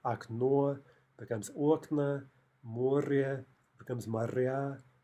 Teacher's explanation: In two-syllable neuter nouns, in the plural, which is going to end in a or ya, the stress almost always jumps to the opposite syllable, right? Wherever it was in the singular, it's going to jump to the other syllable. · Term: stress shifts